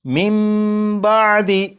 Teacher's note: نون ساکن کے بعد با ہے، جب نون ساکن کے بعد با ہے تو اس نون ساکن کو پھر نہیں پڑھیں گے، بلکہ نون ساکن کو میم سے بدلیں گے اور غنہ کر کے پڑھیں گے